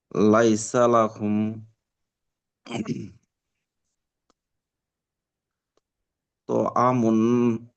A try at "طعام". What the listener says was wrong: তো টান দিতে হবে।